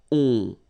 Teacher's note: you don't hear any N, so it's really on.